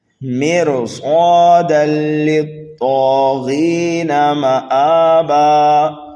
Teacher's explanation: تنوین کے بعد لام یرملون میں سے آنے کی وجہ سے یہاں پر ادغام تو ہوگا لیکن گنہ نہیں کریں گے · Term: بغیر گننے کے ادغام